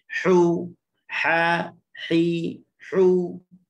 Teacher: Bagi depan dia kena bunyi hu, muncungkan mulut.